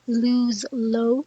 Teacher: a more velarized darker variety before back vowels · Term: dark L